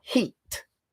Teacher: the sound E is shortened because it's followed by an unvoiced consonant.